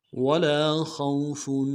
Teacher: لام کے ساتھ الف مدہ ایک الف دال میں کھینچیں گے، خا کو واو کے ساتھ ملانا ہے، خا کو موٹا ادا کریں گے، واو لین بغیر کھینچے پڑیں گے